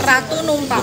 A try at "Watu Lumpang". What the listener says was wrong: Bukan Ratu, Watu Lumpang. Ya, Watu Lumpang. Watu Lumpang.